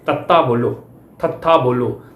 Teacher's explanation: ਦੰਦਾਂ ਦੇ ਨਾਲ ਜੀਭ ਸਪਰਸ਼ ਕਰਦੀ ਆ, ਟੱਚ ਕਰਦੀ ਆ। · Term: ਦੰਤੀ ਧੁਨੀਆਂ